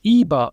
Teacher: In Texas German, there is no more rounding or rounded front vowels left. They are now unrounded. So instead of saying things like über, people will now say iber, which is more or less the same vowel, except for it's not rounded.